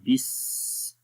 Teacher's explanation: سین کے اندر کیونکہ صفت رخاوہ ہے یعنی کہ آواز جاری رہتی ہے